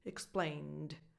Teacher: the final sound is more like a D, because you're coming from an N sound, from an N. Your vocal cords are already vibrating for the N, explain. So that following D, explained, just comes out more like a D, like a proper D, explained.